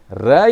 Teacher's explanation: ர என்று சொல்லுகின்ற பொழுது நுனி அன்னத்தை நுனினா வருடி ஒலிப்பதால் அது வருடொலி என்றும், இதே நுனினா நுனி அன்னத்தை பொருந்து ஒரு அதிர்வை கொடுப்பதனால் இது ஆடொலி என்றும் சொல்றோம்.